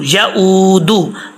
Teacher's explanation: اچھا جی، یہاں پہ پڑھتے ہیں یعودہ حفظہما، ایسا نہیں پڑھنا، حمزہ کے آگے واو ہے، حمزہ واو پیش او، اس کو لمبا کریں گے، ایک الف کی مقدار، ایک الف کی مقدار آپ کو میں نے بتائی ہے کہ ایک فنگر بند کریں اوپن کریں تو ایک الف کی مقدار ہوتی ہے، ٹھیک ہے۔